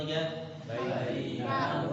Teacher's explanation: Nah, kalau ditahan berarti syiddah. Padahal ya sifatnya rafa'ah ngalir gitu.